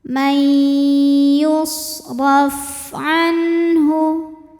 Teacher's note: Yusraf. Huruf ra dibunyikan secara tafkhim karena harokatnya di atas yaitu fathah. Cara bacanya, ra dibunyikan dengan tebal.